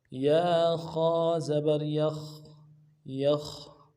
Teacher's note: خا موٹا حرف ہے، خا موٹا کریں گے اور آواز جاری رہے گی۔